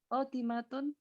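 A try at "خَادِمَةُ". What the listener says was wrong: Khodimatu ya. Kalau ada alif lamnya kita jadikan domah ya. Bukan domatain.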